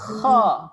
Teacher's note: Kalau kita sebut kha, dia mesti sekali dengan angin. Kerongkong tu rasa bergetar kan, rasa macam gatal.